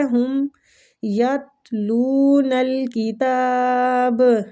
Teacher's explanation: با پہ قلقلہ کریں گے